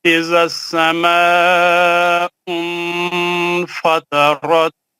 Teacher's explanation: نون کا آواز نہیں آنا، نون کو چھپا کے غنہ کرنا، اخفا اس کو بولتے ہیں